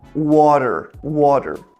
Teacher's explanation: No inglês americano, de forma geral, eles puxam muito o som do R. Por exemplo, quando a gente fala água, é muito comum a gente falar water, water. · o T fica com um som parecido de um D, ou às vezes até um R, né, bem curto, e o R final puxando esse né, o R caipira do Brasil.